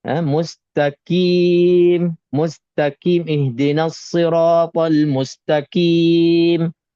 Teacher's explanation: Qaf tempat keluarnya di pangkal lidah. Belakang sekali. Di pangkal lidah tempat keluarnya.